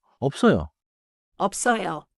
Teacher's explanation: Close your lips first, then release into 써요.